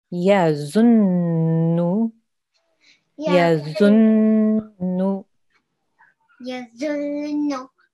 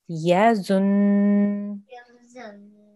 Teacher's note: Good. So you're holding and making a nasal sound for about 2 seconds. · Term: noon gunna